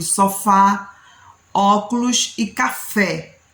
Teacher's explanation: qual é a sílaba tônica da palavra sofá é o fá